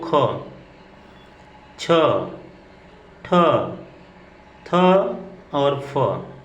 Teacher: अब प्रत्येक वर्ग का दूसरा अक्षर देखा जाए तो ख, छ, ठ, थ और फ, ये आपके महाप्राण है। इनको बोलते समय अधिक वायु मुख से बाहर निकलेगी